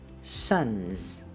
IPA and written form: sʌnz (Son's)